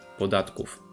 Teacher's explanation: Remember that o with an accent is pronounced as u, and final v devoices to f, podatków. The same happens in the previous word, od.